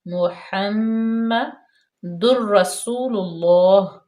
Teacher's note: میم مشدد ہے، یہاں پہ غنہ پیدا کریں گے، تھوڑی دیر کے لیے رک جائیں گے